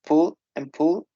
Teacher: in Scottish English, there is something really interesting, and that is they do not have long U.